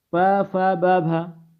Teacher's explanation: प फ ब भ में जो होता है क्या होती हैं, ओष्ठ ध्वनियां होती हैं।